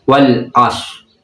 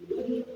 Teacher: Nah, jadi ro-nya itu agak hilang ya. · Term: ihfa bimakna jadid